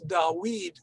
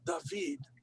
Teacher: However, in ancient Hebrew, it may have been a W sound. Hence, in Arabic, it's Dawid, not David, which retains a W sound for it.